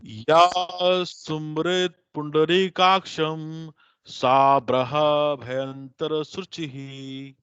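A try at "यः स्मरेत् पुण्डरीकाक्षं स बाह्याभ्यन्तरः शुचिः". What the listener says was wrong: आपके साथ तो व्यक्तिगत करना पड़ेगा अलग से, क्योंकि ये बहुत ज्यादा आपने उसमें मात्राएं बढ़ा दी।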